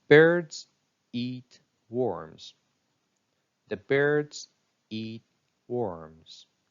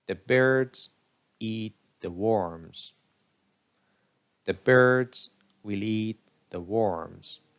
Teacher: that receive stress in the following examples you see that uh three monosyllabic words birds eat worms are stressed even if we add other words like the Articles or auxiliary verbs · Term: stress time rhythm